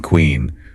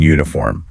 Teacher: sometimes extra sounds appear that aren't even in the spelling, like the W sound we add in queen